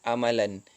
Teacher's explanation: yaitu hentian glotis ditunjukkan di awal perkataannya itu